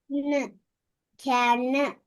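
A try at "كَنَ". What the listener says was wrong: கேன வரப்படாது, அங்கதான் மாறுங்க. கே ந, கே ந.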